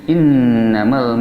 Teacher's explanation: Hamzah adalah di pangkal tenggorokan dekat dada